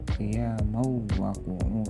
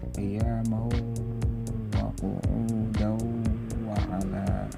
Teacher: fathah tanwin masuk ke huruf wawu namun disertai dengan dengung. Tidak boleh hanya ya mau wa qu'u. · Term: idgham bi gunnah